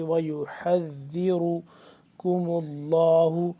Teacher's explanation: حصے سے ادا ہوتا ہے، اور اس کے بعد ذال ہے، ذال کو نرمی سے پڑھیں گے اور را کو پر کر کے